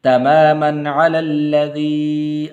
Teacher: تماماً غنہ نہیں کریں گے کیونکہ آگے عین حروف حلقی میں سے